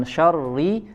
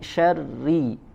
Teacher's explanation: huruf ro ya tasydid dan dia berharokat khas kasrah maka dibaca tipis